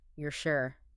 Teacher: Just that little shift in pitch, that upward curve flips the meaning completely from a statement to a question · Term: rising intonation